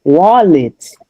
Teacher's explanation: because the stress goes on the first syllable, you say wa and then the the second one is reduced